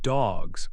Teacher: in dogs, the G sound is voiced. So dogs ends with a Z sound.